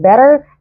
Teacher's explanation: لو جت ما بين تو فاولز بتتنطق تي دي as in better